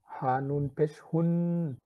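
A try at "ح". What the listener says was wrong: এই যে হুন যখন পড়েছেন তখন ঠিক শোনাচ্ছিল, আবার হাও যখন উচ্চারণ করেছেন তখন কিছুটা হার কাছাকাছি গিয়েছে।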